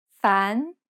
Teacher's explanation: diagonal line going from left to right it sounds like this it has a rising intonation and kind of sounds like you're asking a question fan you should start from a comfortable range and then rise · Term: rising tone